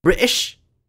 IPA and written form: ˈbɹɪʔɪʃ (british)